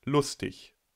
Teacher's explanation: Wörter auf -ig werden im Standard entweder als -ik, also auch mit /k/, oder aber als ich -ich realisiert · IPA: [ç]